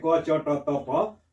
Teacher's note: प्रत्येक वर्ग का पहला वर्ण है क च ट त प, तो इसमें कम मात्रा में हवा निकालनी पड़ रही है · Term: अल्प प्राण